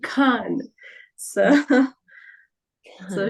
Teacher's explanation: he says Khan from the epiglottis. It's like Khan.